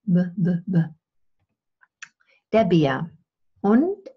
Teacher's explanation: the focal point here is actually this bilabial plosive